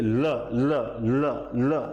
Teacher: बोलोगे तो ये मुख का पार्श्व भाग आप देख सकते हैं हवा इस साइड से निकलती है तो इसीलिए इसे पार्श्विक ध्वनि बोला जाता है · जब जीभ मार्ग अवरुद्ध कर देती है तो हवा मुख के साइड से होकर निकलती है तो इसीलिए बोलते हैं ये होता है हमारे मुख का पार्श्व · अब जब वो कहता है ना कि कार्य प्रगति पर है, तो आप साइड की गलियों से निकले, या हेलमेट चेकिंग आ गई तो साइड की गलियों से निकले, तो जब जीभ मार्ग अवरुद्ध कर देती है तो हवा मुख के साइड से होकर निकलती है